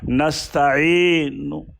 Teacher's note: جیسے نستعینو ہے نا، نستعین، تو ہم یہاں پر اس طرح ٹھہریں کہ نون کی پیش ہلکی سی ظاہر ہو